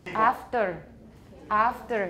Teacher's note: sometimes I think the R is sort of like a British post-vocalic R, doesn't get pronounced much, but then sometimes it is a trill.